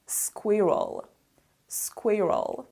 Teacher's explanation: the stress is on the first syllable so it is squirrel squirrel for example I saw a squirrel